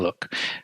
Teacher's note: when you say the l sound you can feel the tongue touches the alveolar ridge